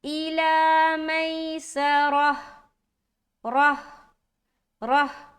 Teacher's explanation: जब आप स्टॉप कर रहे हैं और गोल ता को हाय साकीना में बदल रहे हैं तो स्टॉपिंग की सूरत में हा प्रॉपर निकलना चाहिए और अदा होना चाहिए।